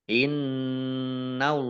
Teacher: Innallaha nun tasdid dibaca gunnah dan ditahan 2 harokat. Allahnya dibaca tebal karena harokat di depannya fathah. Lam fathah berdiri mad tabi'i 2 harokat.